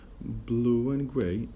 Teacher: we will get the we sound inserted in between